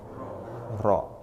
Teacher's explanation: dulu atau mengerti dulu kemudian selanjutnya takrir takrir itu mengulang ya pengucapan huruf yang disertai bergetarnya ujung lidah